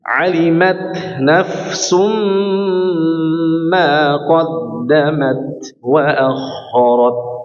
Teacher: taknya diberhentikan dulu atau ditahan dulu agar sifat syiddahnya jelas ya. Kemudian diberikan kelonggaran untuk memberikan sifat hamas pada huruf ta ya.